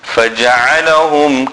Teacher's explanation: ain, center of the throat